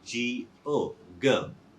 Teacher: And the diphthong, it's considered as a long vowel. And here the O sound, it remains open. It's not closed by any other consonant sound. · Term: open syllable